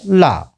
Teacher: हवा है शरीर की, वो जीभ के दोनों किनारों से होकर निकलती है, पार्श्व से होकर के निकलती है, इसलिए पार्श्विक व्यंजन कहलाता है